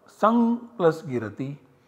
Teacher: substitutes this anusvara by the nasal parasavarna of g, which is ng. So we have the output sang plus girati, and that is optional, so we also get sam and girati as the output.